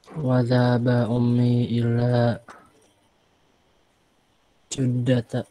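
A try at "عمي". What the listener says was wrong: ini ammi ya, bukan ummi. Ammi, paman dari ayah. Kalau ummi dia pakai hamzah ini ummun. Ini pakai ain.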